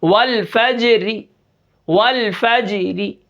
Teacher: وقف بالروم کے اندر حرکت کے موافق ہم را کو پڑھیں گے. والفجر، اس را کو ہم باریک پڑھیں گے، را کے نیچے زیر ہے